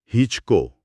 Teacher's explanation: મીંડુ એકદમ હળવું છે એટલે હી દીર્ઘ છે